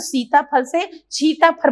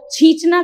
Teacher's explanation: सरोते का स जो छ में बदलता है